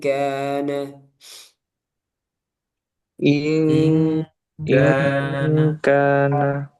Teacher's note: karena nun sukun bertemu kaf, kaf huruf tipis, dia ditipiskan ing, bukan iong, ing kana.